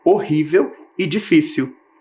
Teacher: todas as palavrinhas estavam com a sílaba tônica na penúltima posição